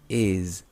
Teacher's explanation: que la forma de be que usamos termina en s is esta s se pronuncia Z vibrando porque la vocal que está antes de esa s es un sonido sonoro es decir que tus cuerdas vocales vibran cuando lo pronuncias si